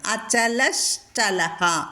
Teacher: വിസർഗം കഴിഞ്ഞിട്ട് ച വന്നതുകൊണ്ട് ശ കൂട്ടിച്ചേർക്കുന്നു · ഘൃതാശീരചലശ്ചലഹ, അചലശ്ചലഹ എന്ന് വരണം. അചലഹ ചലഹ, വിസർഗം കഴിഞ്ഞിട്ട് ച വന്നതുകൊണ്ട് ഷ കൂട്ടിച്ചേർക്കുന്നു. അതാണ് അവിടെ അചലശ്ചലഹ എന്ന് പറയുന്നത്.